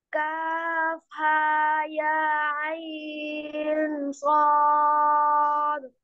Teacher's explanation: আইন সদ, আইনে টান দিয়ে এরপরে গুণনা করে তারপরে সদ বলতে হবে।